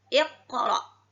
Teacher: Jadi ketika dihukumkan, ini namanya qalqalah sughra. Qalqalah kecil, pantulannya tidak terlalu terdengar.